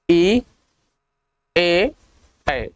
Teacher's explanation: देखिए ई में क्या है, आपका जीभ दांत को टच कर रहा है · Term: अग्रस्वर